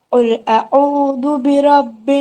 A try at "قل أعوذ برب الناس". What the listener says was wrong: आइन को लंबा करे शहजादे, आइन को। कुल अऊज़ु बिरब्बिन, अऊज़ु, अऊज़ु इसको।